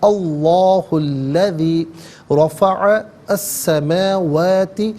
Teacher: رفع میں را پر زبر ہے، را پر زبر یا پیش ہو تو را کو پر پڑھتے ہیں، زیر ہو تو باریک پڑھتے ہیں، یہاں پر کر کے پڑھا جائے گا۔